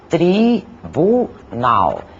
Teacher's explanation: na palavra tribunal, composta por 3 sílabas, tribunal, as 2 primeiras são átonas e a última é tônica, aquela que falamos com maior intensidade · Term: sílaba tônica